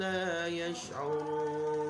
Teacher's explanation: Jadi lamnya panjang karena dia adalah mad jaiz munfasil, ya, harokatnya harus lebih panjang daripada mad tabi'i, yaitu 5 harokat.